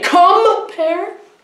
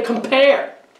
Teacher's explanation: the stress is on pair so the comp is unstressed